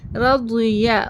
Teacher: زبان کا جو حافۃ اللسان ہے، یعنی سائڈ سے، کارنر سے، جو داڑوں کے قریب رہے، جو داڑوں تک ہے، اس کو حافۃ اللسان بولتے ہیں. حافۃ اللسان ہمیں اس کے اپوزٹ داڑوں کو لگانا ہے، تب ہمارا ضاد ادا ہوگا. زبان کی نوک سے ہمیں ضاد دال اور ضال کی طرح نہیں پڑھنا ہے.